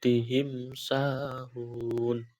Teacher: cara membacanya dengan jelas di bibir dan mulut tertutup tanpa dipanjangkan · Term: izhar syafawi